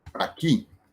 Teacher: lleva el acento en la última sílaba, que es ki, y lleva tilde porque la palabra termina en vocal. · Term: aguda